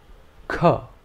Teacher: The next consonant is pronounced k. This is an aspirated consonant, and the air pressure behind the tongue is released with a little force along with the sound.